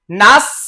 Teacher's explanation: সিনের উচ্চারণটা একটু পাতলা করে ছিটিয়ে দিতে হবে